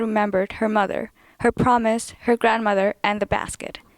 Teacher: in North American English is we tend to end phrases with some creaky voice